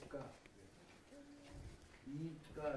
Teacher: And you got the final vowel, more emphasis on the final vowel, ska. E, ska, and then I got that nasal I, giving it the I-N.